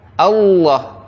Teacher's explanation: lam itu ujung lidah ya bertemu dengan langit-langit mulut yang atas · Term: tafkhim